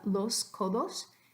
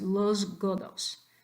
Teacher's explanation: So the next one, you've got los codos, because K is unvoiced, so that S before it stays unvoiced. But los godos, G, G, is a voiced sound, so the S here changes to the sound, the voiced sound Z.